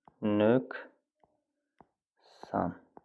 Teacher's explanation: Nöqsan vurğu ikinci hecanın üzərindədir.